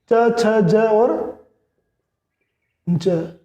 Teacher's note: सबसे पहले स्पर्श, और फिर हवा एकदम झटके से निकलती है संघर्ष के साथ में, तो ये स्पर्श संघर्षी हो गए, च, छ, ज और ज।